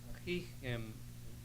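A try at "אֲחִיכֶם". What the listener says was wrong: Ahichem, sorry, accent on the end.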